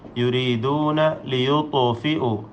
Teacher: ത്വാഇന് ഖൽഖല കൊടുക്കണം, വ്യക്തമാക്കി സുക്കൂൻ ചലിപ്പിച്ചുച്ചരിക്കുക.